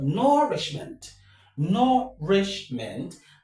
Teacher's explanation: The stress is on nour, right? · This word nourishment has 3 syllables and the stress falls on the third syllable from the end of the word.